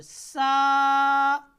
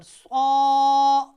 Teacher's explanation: آئے گا آپ نے اس کو موٹا کر کے پڑھنا ہے، صاد میں بھی سیٹی بجے گی، سین کو ادا کرتے وقت بھی سیٹی بجے گی · لیکن سین اور صاد میں فرق ایسے ہوگا کہ صاد کی آواز جو ہے وہ موٹی ہونی ہے